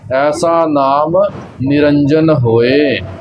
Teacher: ਜਿਹੜਾ ਅਖੀਰ ਤੇ ਨਨਾ ਹੈ ਉਥੇ ਨਾਣਾ ਨਹੀਂ ਲਾ ਦੇਣਾ ਨਿਰੰਜਨ ਇਸ ਪ੍ਰਕਾਰ ਇਸਦਾ ਉਚਾਰਨ ਨਹੀਂ ਕਰਨਾ ਖਾਸ ਤੌਰ ਤੇ ਧਿਆਨ ਰੱਖਿਓ ਕਿ ਇਸ ਦਾ ਉਚਾਰਨ ਨਨੇ ਦੇ ਨਾਲ ਹੀ ਹੋਵੇ ਐਸਾ ਨਾਮੁ ਨਿਰੰਜਨ ਹੋਇ।